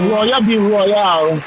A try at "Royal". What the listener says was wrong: No, we don't need the extra elongated accent. It's just L at the end. Royal.